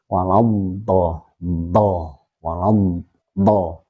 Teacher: huruf Dod itu makhrajnya berada di Pangkal tepi lidah pangkal tepi lidah sini sampai ke tengah-tengah lidah sampai pangkal tepi